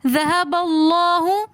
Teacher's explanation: لفظ اللہ سے پہلے زبر آ رہا ہے تو اس لیے ہم لفظ اللہ کو موٹا پڑھیں گے